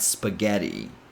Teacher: So So the first syllable is sp. Then the second syllable is the strongest syllable in this word